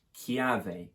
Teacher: They're happy to stick with the original consonant, but they knock off the L and instead replace it with an I, which creates a Y sound.